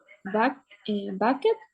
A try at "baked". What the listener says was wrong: No, no pronunciamos la E, decimos baked. Okay, so repito, si hay una D o una T antes de la ED, sí pronunciamos esa E.